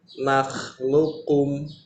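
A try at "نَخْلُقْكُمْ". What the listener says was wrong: ada tasdidnya. Jadi tasdid dia.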